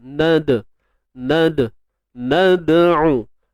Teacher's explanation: Dal sukun ni tuan-puan, dia bersifat qalqalah, kecil, lemah, sughra. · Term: Qalqalah sughra